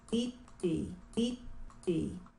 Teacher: The first vowel is E, but the second vowel is kind of between E and I.